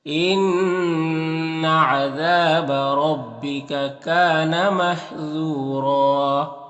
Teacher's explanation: یہاں پر واو مدہ ہے اور یہاں پر ایک زبر کے ساتھ الف پڑھیں گے اور را کو پر پڑھیں گے